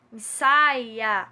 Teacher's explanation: Nós temos aí um ditongo, né, no A e no I, porque o I é muito fraquinho, ele não pode ficar sozinho nessa sílaba